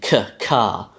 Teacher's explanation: in the English pronunciation, this is a k sound, which is a velar plosive, as in k, ka.